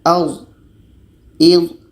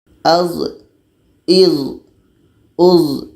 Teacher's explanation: Karena D ini sifatnya jahar, tertahan anginnya.